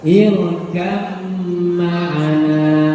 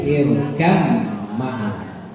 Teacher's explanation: ketika disambung maka irkam ma'ana, baknya hilang, masuk ke huruf mim. Irkab ma'ana jangan, tapi irkam ma'ana.